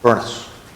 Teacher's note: in parts of Scotland that name is pronounced with two syllables